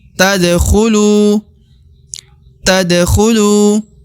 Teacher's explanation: kemudian lu yang di ujung dibaca Dua harakat karena terdapat wau sukun atau wau mati yang merupakan tanda dua harakat dan Alif yang di ujung adalah